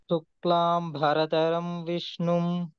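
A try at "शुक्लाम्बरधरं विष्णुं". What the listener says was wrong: there is no stress for ba, the stress is only for dha.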